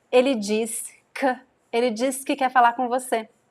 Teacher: the word que is commonly reduced to k, the sound k